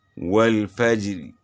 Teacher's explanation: وہ زیر والی را جس پر روم کے ساتھ وقف کیا جائے تو اس را کو باریک پڑھا جائے گا